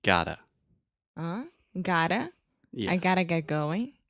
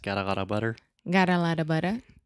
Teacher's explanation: the flap T occurs a lot with contractions like I gotta